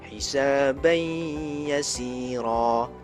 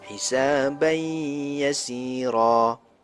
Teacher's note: Dengar, ada dengung 2 harakat. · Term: idgham ma'al gunnah